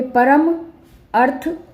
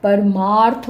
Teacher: परम में म अ अ की साउंड आ रही ना म तो अ और अ मिलके आ बन गया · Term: दीर्घ संधि